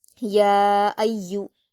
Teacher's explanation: قل یا، حمزہ پر حرکت ہے، یا پر تشدید ہے تو حمزہ کو یا سے ملائیں گے اور یا کو سختی کے ساتھ پڑھیں گے، یا پر پیش کی حرکت جلد پڑھیں گے، یا ایو۔